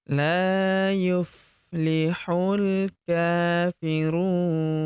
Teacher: Kemudian huruf hu langsung lompat masuk ke huruf lam yang berharakat sukun. Langsung masuk ke sini alifnya tidak dibaca atau dianggap tidak ada.